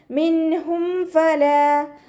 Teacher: മിൻഹും ഫല, ഫ ലൈറ്റ് ആക്കിയിട്ട് ഉച്ചരിക്കുക കേട്ടോ. മഖ്റജ് വരുന്നത് നമ്മുടെ മേലെ മുൻപല്ലിൻ്റെ അറ്റവും താഴെ ചുണ്ടിൻ്റെ ഉൾവശത്തെ നനഞ്ഞ ഭാഗവും ചേർന്നിട്ടാണ്